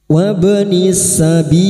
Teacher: huruf ba yang mati asli di tengah kalimat qalqala sugro, jangan lupa dipantulkan · lam ta'rif yang bertemu sin idgham syamsiyah